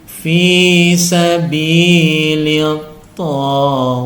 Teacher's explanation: ada desisnya karena tak bersukun salah satu huruf hams